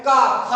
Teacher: ऐसे ही कंठ जो है का खा हम जब बोलते हैं तो कंठ के द्वारा निकलते हैं, तो इसीलिए इन्हें कंठ व्यंजन भी कहा जाता है, यानी कि कंठ के द्वारा ये व्यंजन उच्चारित होते हैं।